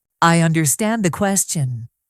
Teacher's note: Rising tone, sounds unsure.